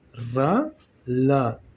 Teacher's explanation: जिह्वा आपका कहाँ स्पर्श हो रहा है जाके, इसी ऊपर मसूड़े के, इसी दंतमूल के मसूड़े में जाकर स्पर्श हो रहा है। ठीक है, तो रा और ला ऐसे दो वर्ण हैं, रा और ला ऐसे दो वर्ण हैं जिनका जो है उच्चारण स्थान क्या कहा जाएगा, दंतमूल कहा जाएगा।